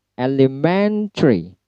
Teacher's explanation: Elementary. Men-nya yang di stress.